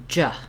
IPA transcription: dʒ